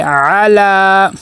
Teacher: لام کے اوپر کھڑا زبر ہے، ایک الف کے برابر لمبا کریں گے